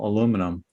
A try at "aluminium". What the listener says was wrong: You forgot to put that extra I in there.